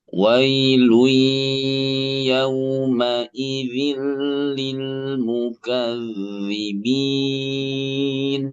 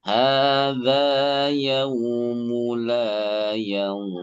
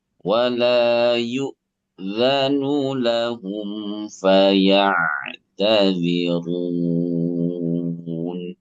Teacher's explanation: Saya minta coba naik datar turun ya di ayat 3 ayat terakhir.